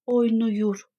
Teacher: Buradakı ikinci hecədəki A saitimiz qapalı U saitinə keçdi.